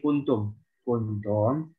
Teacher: Taknya jangan ketebelan. Kalau ketebelan jadi kayak tok.